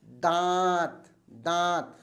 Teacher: और जब हम अनुनासिक शब्दों को बोलते हैं दांत, दांत, तो हमारे नाक से भी हवा निकल रही है और मुंह से भी निकल रही है